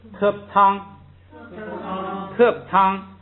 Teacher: 原来这个terp是降调，因为它在第一个音节不许降，所以把它读成平调